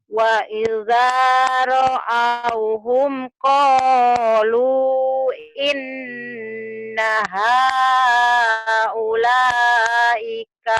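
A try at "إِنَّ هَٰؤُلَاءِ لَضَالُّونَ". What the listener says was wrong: ulaika? Nggak ada ulaika. Haulai.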